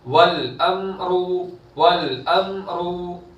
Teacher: रॉ पर पेश है तो रॉ को पूर करेंगे